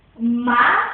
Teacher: As sílabas átona, são que e na. A sílaba tônica é o má. Por quê? O má é acentuado e a sílaba falada com mais intensidade, mais alto, mais intensa